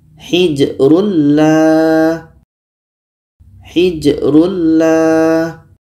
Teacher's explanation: Idam bila ghunah jadi bunyi tanwin ini kita masukkan ke la masuknya tanwin kepada la itu sudah sempurna karena bunyi tanwin tidak terdengar lagi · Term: idgham, idgham bila gunnah